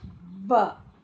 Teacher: it's a labiodental sound. That is your lower lip and the teeth. They should touch.